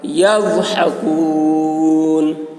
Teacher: ضاد کی آواز موٹی ہوگی, ہا حلق سے, اور کاف باریک